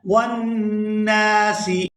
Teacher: یہاں نون مشدد پر غنہ کریں گے اور نون کو جب دوسری دفعہ ادا کریں گے تو اس کو کھینچ کر ادا کریں گے کیونکہ اس کے ساتھ الف مدہ ہے